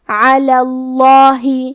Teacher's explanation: کلمت علا میں کیونکہ لام پہ زبر ہے لہذا ہم لفظ الجلالہ مطلب کلمت اللہ کے لام کو تفخیم سے مطلب موٹی آواز میں پڑھیں گے